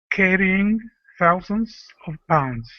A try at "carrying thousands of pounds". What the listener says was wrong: oh watch your R sound